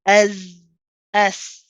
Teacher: it's a rahawa letter. It's one that you prolong. So we don't just say S, we say S, keep it going.